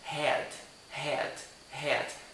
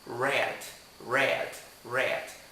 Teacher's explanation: O R tem esse som contaminado, ele tem esse som de interiorano aqui no Brasil, digamos assim, red, red, red. Já o som do H é um som reto, por isso fica head, head, head. Não tem essa fricção.